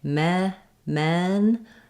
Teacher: it's a LAX vowel and my tongue is fairly flat my jaw's not very open